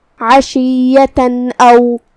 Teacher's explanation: ہم یہاں تنوین کو ظاہر کریں گے اور اسے نون ساکن پڑھیں گے اور بغیر غنہ سے حکم کو ادا کریں گے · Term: اظہار